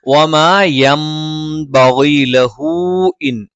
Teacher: യൻ ബഗി, നൂനിന് ശേഷം സുക്കൂനുള്ള നൂനിന് ശേഷം ബ വന്നു, അത് ഇഖ്ലാബാണ്. നൂനിനെ നമ്മൾ മീമാക്കി മറിച്ച് മണിക്കും, അതുകൊണ്ടാണ് ഇവിടെ ഒരു മീമിന്റെ ചിഹ്നം ഇട്ടിരിക്കുന്നത്.